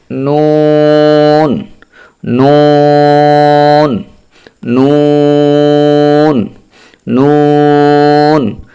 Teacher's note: উচ্চারণ করতে হবে আমরা যদি নয় নম্বর মাখরাজটি লক্ষ্য করি তাহলে জিহ্বার আগা তার বরাবর উপরের তালুর সঙ্গে লাগাইয়া নুন